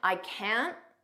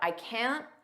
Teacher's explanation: we don't push out that T